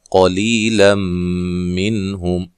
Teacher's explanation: جب وقف کرنا ہے میم کو ہلانا نہیں ہے